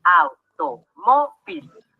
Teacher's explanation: nos damos cuenta que la sílaba tónica está en mo y si contamos las sílabas en la penúltima por lo tanto es grave y recordando las reglas nos damos